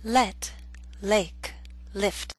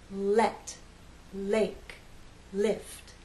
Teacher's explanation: the tip of the tongue dropping down to flow into the following vow sound